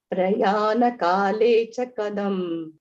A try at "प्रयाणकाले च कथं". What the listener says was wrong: Kadam or what? Katham. Ta, tha, da, dha, no.